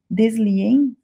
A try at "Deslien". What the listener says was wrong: O S em francês a gente não pronuncia, então é Delia. Delia.